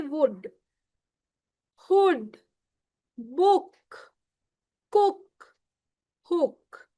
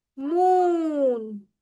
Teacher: So there is no stretch on these oo, double O's. But when we come to long oo, there is a stretch in the oo sound.